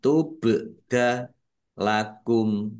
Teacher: Tubdakum ba sukun bacaan qalqalah dibaca memantul ditampakkan pantulannya.